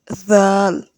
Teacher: জাল জিহ্বার আগা হতে নরম ভাবে বলতে হবে।